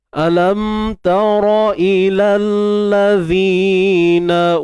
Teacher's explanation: Zima asli, dua harakat. Kita keluarkan sedikit hujung lidah.